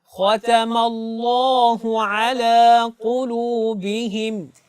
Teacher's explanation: یہاں پر اللہ کا جو نام ہے اس میں لام کو آپ نے موٹا کر کے پڑھنا ہے